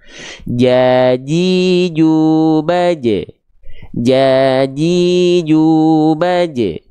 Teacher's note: kalau huruf Jim Tengah lidahnya diangkat sampai nempel